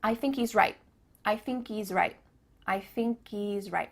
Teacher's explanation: at the end of the word right, there's no T sound.